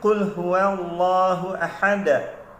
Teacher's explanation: huruf Dal ini adalah satu daripada lima huruf yang ketika kita mati dan atau kita sukun kan bacaannya dia ada bunyi detak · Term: bunyi pantulan sedikit